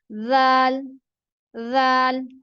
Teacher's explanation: ज़ाल ज्यादा जो है वो ये ऊपर वाले सामने के दांतों की नोक की तरफ लगती है